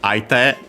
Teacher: Accent on the last mora, it's a compound technically. The te is the te of hand accented on its own.